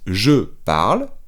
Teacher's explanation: Cuidado que la E final de parle no se pronuncia.